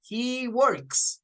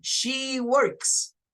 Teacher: Es una S sin vibración la que vamos a usar acá.